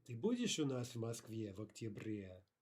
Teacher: note the intonation is rising and falling on the point of the question, which appears to be, will you be or will you not be?